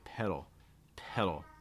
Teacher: for the fast D sound, you don't even need to make contact with the top of your mouth, honestly. You can just kind of raise and lower your tongue very fast in a lot of cases.